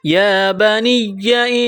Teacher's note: وَوَصَّى بِهَا إِبْرَاهِيمُ وَوَصَّى بِهَا إِبْرَاهِيمُ بَنِيهِ وَيَعْقُوبُ بَنِيهِ وَيَعْقُوبُ وَوَصَّى بِهَا إِبْرَاهِيمُ بَنِيهِ وَيَعْقُوبُ يَا بَنِيَّ إِنَّ اللَّهَ اصْطَفَى یا بنی، اس یا کو دبانا ہے، نون مشدد پر غنہ کریں گے، آواز ناک میں چھپائیں گے